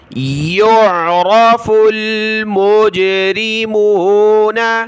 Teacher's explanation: جیم پر قلقلہ ہوگا